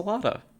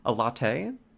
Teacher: I'm saying with a D, not a double T.